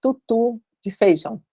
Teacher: Na hora que você pensa que vai falar tutu, seus lábios arredondam. Só de você pensar que vai falar tut, seu lábio arredonda, porque o seu corpo sabe que tem que arredondar o lábio para isso, né? · esse Wzinho é arredondado, como se fosse fazer um T arredondando os lábios